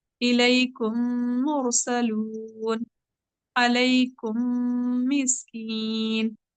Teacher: پہلے میم کا دوسرے میم میں ادغام ہو رہا ہے